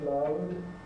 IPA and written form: lʌvd (loved)